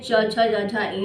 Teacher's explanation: च वर्ग और ई इनका उच्चारण स्थान क्या होता है तालू तालू होता है